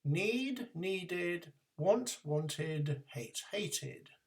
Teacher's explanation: for the past forms we end in an extra sound de just before that there is an extra sound e which is needed to separate the d at the end of the word from the main verb